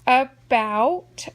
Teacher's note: I can hear an ow in the second syllable